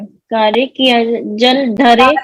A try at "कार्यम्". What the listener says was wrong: कार्य नहीं है, कार्यम।